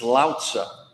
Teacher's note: When you pronounce his name, all the stress is on the first syllable.